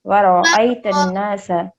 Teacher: یہاں پر حرف را کو موٹا پڑھا جائے گا. ورا، ورا نہیں پڑھیں گے.